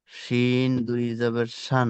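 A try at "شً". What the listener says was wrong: জি, অক্ষরে টান রাখুন। দুই না, দু জাবার।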